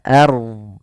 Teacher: pada lafal ard di sini ro-nya dibaca tebal, jangan ard, tapi dia ard.